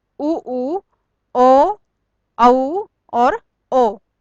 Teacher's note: इन स्वरों के उच्चारण में होठ गोल हो जाते हैं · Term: वृत्तामुखी